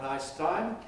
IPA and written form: ˈnaɪs ˈtaɪm (nice time)